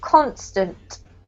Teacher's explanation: has the emphasis on the first syllable